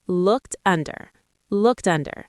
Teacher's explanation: In fast speech, it may sound like looked under. The T links to the next vowel sound.